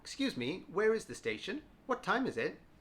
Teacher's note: listen for the intonation at the end where I go up